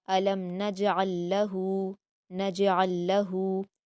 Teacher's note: لام ساکن کے بعد لام ہے تو ہم عین کو ڈائریکٹ لام میں ملا کر پڑھیں گے سختی کے ساتھ